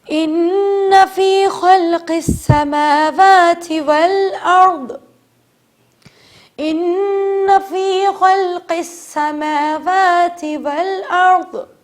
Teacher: آپ دیکھ رہے ہیں اگلی آیت میں غنہ موجود ہے، نون کے اوپر تشدید موجود ہے تو غنہ کریں گے